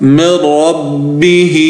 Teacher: یہاں پر ادغام ہوگا اور ادغام بلا غنہ ہوگا، یعنی غنہ نہیں کیا جائے گا